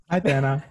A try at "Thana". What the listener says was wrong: Thana. It's the H is silent. That's okay.